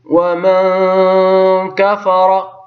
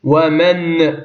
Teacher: النون حينما نطقتها قرأتها بشيء من الإخفاء، يعني لم أظهرها